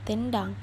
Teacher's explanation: Huruf N dan D di sini sama-sama letaknya ada di alveolar. Jadi lebih nyambung dalam pembuatan katanya.